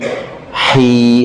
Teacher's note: senyumkan i, jangan ke e. Rahim, bukan, tapi juga jangan ke rongga hidung.